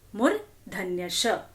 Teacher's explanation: Our tongue rolls and goes inside and touches the upper part of our mouth.